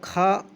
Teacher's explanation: खा कंठ महाप्राण अघोष है